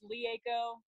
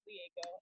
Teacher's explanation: the R sounds like an L